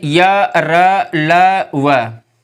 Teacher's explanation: य, र, ल, व वर्ण जो हैं इनको बोलने में, इनको उच्चारित करने में हमें कम प्राणवायु की आवश्यकता होती है, इसीलिए इनको हम अल्प प्राण कहते हैं